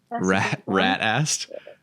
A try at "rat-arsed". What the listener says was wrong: Yeah, he was absolutely rat-arsed. So you say ass, but we say arse. So like, oh my God, he was absolutely rat-arsed.